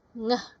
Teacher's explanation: The air flows unobstructed through the nose. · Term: nasal